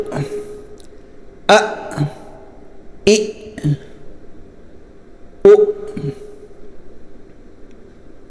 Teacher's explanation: यहां पर आवाज झटके से बिल्कुल रोक देनी है सांस बंद हो जाए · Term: हमजा